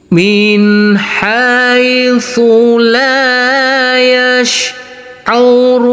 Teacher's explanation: kita lanjutkan untuk yang enam harakat kita kasih Irama Nada turun